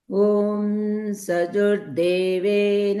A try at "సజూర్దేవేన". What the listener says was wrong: ఇక్కడ ఒక్క నిమిషం. సజూ జూకి దీర్ఘం. సజూ